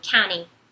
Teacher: pra pronúncia americana, county, você não vai pronunciar o T, vai ser como se não tivesse, fosse só um N